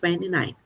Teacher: às vezes acaba não tendo esse som do T mesmo